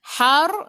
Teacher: lidah naik ke atas, ra-nya tebal sebab sebelum ra tu ada baris atas